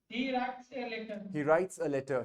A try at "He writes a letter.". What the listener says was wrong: इसको अ करके पढ़ेंगे, ए नहीं पढ़ेंगे.